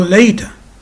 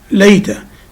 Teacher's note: because the second syllable is weak, it contains a schwa, so the first syllable is stressed